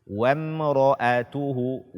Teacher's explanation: Setelah mim mati ini adalah huruf ra, maka dia dibaca dengan jelas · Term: izhar syafawi